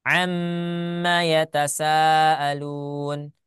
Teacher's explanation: dengan mim berharakat ya maka dia menjadi idgham ya menjadi Idam mim yang pertama masuk ke mim yang kedua